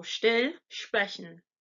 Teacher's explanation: the SP and ST sound is actually pronounced like Shh so it's the SH sound and then P or the sound